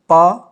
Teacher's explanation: होंठ आपके चिपक रहे हैं, खुल रहे हैं।